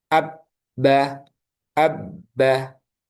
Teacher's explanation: Jadi huruf ba ini keluarnya dari asyafatain dari kedua bibir